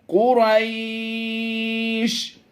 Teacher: मद्दे लीन आरिज होने की वजह से, यानी हालत वक़फ़ में इसे हम सिर्फ लंबा करके पढ़ेंगे।